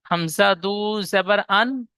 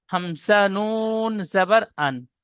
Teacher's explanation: এই দুজাবার তানবিনের যেমন উচ্চারণ করছি নুন সাকিনের উচ্চারণটি ঠিক একই করছি